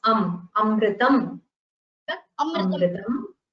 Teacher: There is no visarga at the end. There is an anuswara at the end, which means it is amritam.